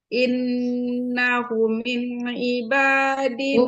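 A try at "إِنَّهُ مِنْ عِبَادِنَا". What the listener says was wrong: Panjang sedikit. Innahu min ibadina.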